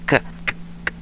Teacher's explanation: The K, velar plosive, unvoiced velar plosive.